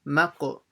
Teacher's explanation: So now the meme will join to the qaf, maqo. So read the qaf properly with a bouncing sound.